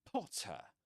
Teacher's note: Potter ends with a schwa, right? this small sound, you know, neutral